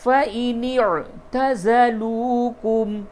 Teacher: عین حلق سے نکالیے